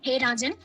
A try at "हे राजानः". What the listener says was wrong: थोड़ा विसर्ग का ध्यान रखो। साधना जा पूरा है इसलिए जा का ध्यान रखो।